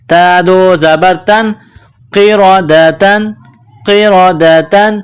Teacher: تنوین کے بعد خا ہے، حروف حلقی ہے تو یہاں تنوین پر غنہ نہیں کریں گے